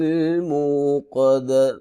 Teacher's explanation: قاف حروف مستعلیہ میں سے ہے، موٹا کر کے پڑھیں گے